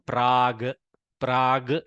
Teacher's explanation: the kakara has softened to a gakara